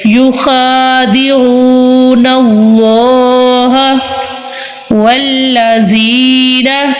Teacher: इसमें चलालत अल्लाह वजल वाले लाम से पहले ज़बर है, तो हम इसमें चलालत अल्लाह वजल वाले लाम को पूर यानी मोटा पढ़ेंगे